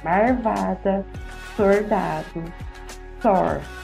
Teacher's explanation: rotacionismo, que é a troca do L por R